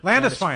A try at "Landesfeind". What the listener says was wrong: You've been saying it wrong for years. It's the E before I. In German, that's a I sound, not an E sound.